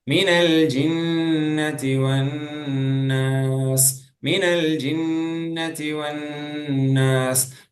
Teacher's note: மீனல் ஜின்னதி இதுலயும் குன்னா வன்னாஸ்லயும் குன்னா குன்னா plus குன்னா double குன்னா இருக்கு